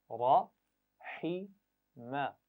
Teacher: हा को गले के दरमियान से अदा करना है, हा के मखरज से नहीं करना जो हमजा के साथ होता है।